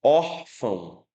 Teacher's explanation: Ele é nasal porque uma parte do som sai pela cavidade nasal e ele é decrescente.